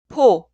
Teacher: pi읍 en coreano es un sonido aspirado. Sale aire de los pulmones cuando pronuncia este pi읍.